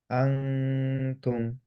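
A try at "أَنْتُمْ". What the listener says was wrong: আরেকবার করি টাংটা আরেকটু সামনে, হ্যাঁ? আ আ একটু ঝুলানো অবস্থায়।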